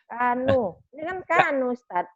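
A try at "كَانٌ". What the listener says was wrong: Tapi kan ada tanwin ini, Bu. kanun. Kanun. Kanun. Kanun gitu. kalau ininya satu, ininya nggak dua gini.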